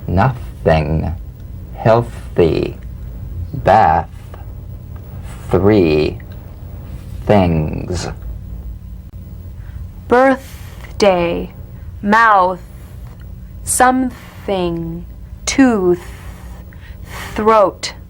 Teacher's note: the unvoiced tongue point the teeth frickative consonant play this dry gentle whispered lightly and softly without the slightest · this dry gentle whispered lightly and softly without the slightest pressure feel a steady but airless sensation of escaping breath stream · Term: voiceless th